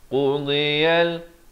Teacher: Qudiyal, di hujung di pangkal lidah kita, di tepi lidah. Dad ini makhrajnya di tepi lidah, kanan ataupun kiri mengikut selesaan.